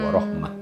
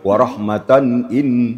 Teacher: dilanjutkan dia tetap dibaca ta. Tetap dibaca ta ya karena dia kalau di kafkam baru kembali bunyi ha warahmah.